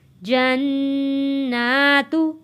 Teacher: نون کے اوپر تشدید ہے، غنہ ادا کرنا ہے، اور کھڑی زبر ہے، اس کو 1 الف کے برابر کھینچ کر پڑھنا ہے